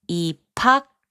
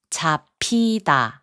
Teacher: 비읍 and 히응 are combined to make a 피읍 sound